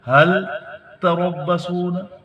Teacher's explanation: حل کا لام باقی رکھتے ہوئے تا پہ شد پڑھیں گے، اس کو حت نہیں پڑھیں گے.